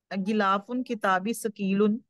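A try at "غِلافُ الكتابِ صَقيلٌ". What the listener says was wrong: देखिए, आपने पढ़ा गिलाफुन पढ़ा ना? गिलाफुल किताबी सकीलुन पढ़े फिर से।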